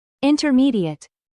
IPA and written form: ˌɪntərˈmiːdiət (INTERMEDIATE)